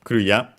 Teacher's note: That's the accent is the last high syllable. After that, everything is low. So yeah, low, high, low in our case for Korea. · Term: pitch accents